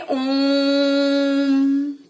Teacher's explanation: प्लुत स्वर वे स्वर होते हैं जिनके उच्चारण में ह्रस्व स्वर से तिगुना यानी 3 गुना समय लगता है।